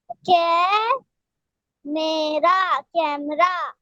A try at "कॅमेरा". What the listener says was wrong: कैमरा नहीं, ये कैमेरा। मरा आप हिंदी में उसको बोलते हो, इंग्लिश में बोल सकते हो कैमरा, लेकिन ये लिखा हुआ है कैमेरा।